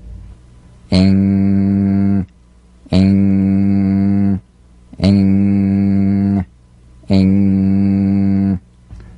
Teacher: So sing with the back of the tongue in contact with the soft palate. Back of the tongue to the soft palate. Vibration coming through the nose. Feel a twangy nasal resonance.